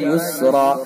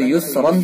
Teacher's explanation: وقف کی حالت میں ایک ہی زبر پڑھا جا رہا ہے اور الف پڑھا جا رہا ہے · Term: وقف بالابدال